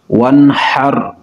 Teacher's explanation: یہاں پر اظہار ہوگا کیونکہ نون ساکن کے بعد حروف حلقی ہے